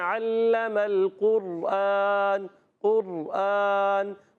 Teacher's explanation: تکرار اصلی نہیں ہوتی بلکہ تکرار کی مشابہت پائی جاتی ہے. تھوڑی سی نوک زبان میں کپ کپاہٹ ہوتی ہے، وہ پڑھنے والے کو پتہ چلے، سامنے والوں کو اتنا پتہ نہیں چلنا چاہیے.